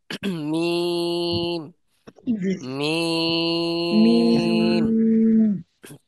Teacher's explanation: বলার সময় 3 আলিফ পরিমাণ টানতে হবে। · বলতে দুই ঠোঁটের শুকনো অংশ থেকে, দুই ঠোঁটের শুকনো অংশ থেকে মিম উচ্চারণ হয়